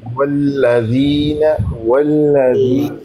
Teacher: ہونٹو کو، لام کو گول موٹا کر کریں گے۔ واو کو پڑھتے وقت ہونٹو کو گول کرتے ہیں